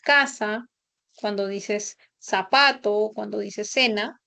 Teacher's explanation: todo lo vas a articular con el sonido de la s.